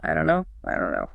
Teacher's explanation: The do and not basically collapse into a single quick nasalized sound.